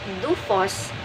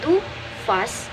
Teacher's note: Pronounce the word do-fos with the accent on the first syllable